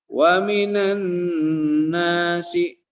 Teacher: Dan alif lamnya kemudian tidak dibaca jelas gitu ya. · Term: alif lam Syamsiyah